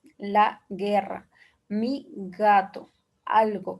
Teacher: en cuanto al consonante G, es fricativo lingovelar sonora